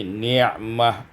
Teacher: ni'matah bil ha waqfan, dibaca dengan ha pada waqaf menjadi ni'mah